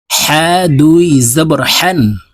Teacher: হা হরফ হলকের মধ্যখান থেকে উচ্চারণ করতে হবে